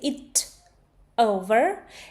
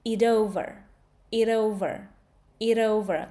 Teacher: T actually turns into d. It over. It over. It over. Like very soft. Very smooth.